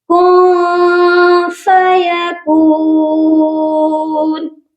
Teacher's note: یعنی کہ نون کی آواز کو ہم ناک میں چھپا کر پڑھیں گے۔ اخفا کا مطلب ہوتا ہے چھپانا، یہاں ہم اپنی آواز کو ناک میں چھپائیں گے۔